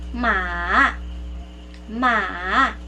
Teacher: it's a falling Rising tone